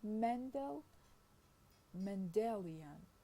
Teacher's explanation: and have a stress shift mendel in the first i mean the stress in mendel is on the first syllable while in mendelian it is on the second